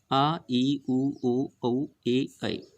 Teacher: दीर्घ जिनको बोलने में ह्रस्व से दुगुना समय लगे, यानी 2 मात्रिक होते हैं